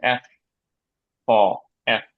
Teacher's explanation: পারব কারণ সাউন্ডটাই আলাদা ইংলিশের সাউন্ডটা এরাবিকের মত দাত দেখা যাবে উপরের দাত দেখা যাবে দাত লাগবে ঠোটে